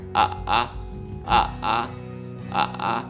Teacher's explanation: we have a more guttural sound in the throat right here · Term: third tone